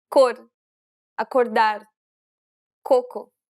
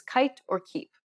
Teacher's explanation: this is an unaspirated sound, meaning there shouldn't be a burst of air when you pronounce this consonant